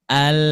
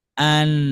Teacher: Beliau menyebutkan huruf lam lebih di depan daripada huruf nun.